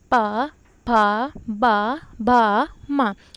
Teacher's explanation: इनका उच्चारण ओष्ठ की सहायता से होता है, इसीलिए इसे ओष्ठ व्यंजन कहते हैं